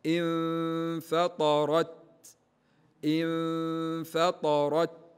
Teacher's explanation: حرف التاء في أوله شدة يعني انحباس للصوت، وفي نهايته أو في آخره همس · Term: همس حرف التاء